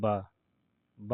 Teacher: ओष अल्प्राण और घोष वर्ण तीनों है